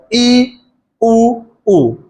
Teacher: जिनके उच्चारण में मुख लगभग बंद रहता है, मुख खुलता ही नहीं। जैसे ई उ बोल के देख लो आप, ई मुख बिल्कुल बंद है, ई उ। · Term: संवृत